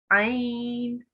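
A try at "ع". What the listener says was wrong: So make that a little bit more from the middle of your throat, okay? Ain.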